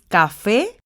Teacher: la sílaba tónica está en la última sílaba lo que quiere decir que es una palabra aguda y como